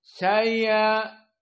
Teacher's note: hamzah a dibaca tashil seperti bighaibin mendekati ya